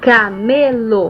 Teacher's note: é uma palavra paroxítona apresenta maior entoação na penúltima sílaba